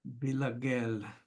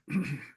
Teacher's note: it's as if there's one gimel closing the previous syllable and a second gimel starting the next syllable. So I would pronounce it in two syllables, villager, villager. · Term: strong dagesh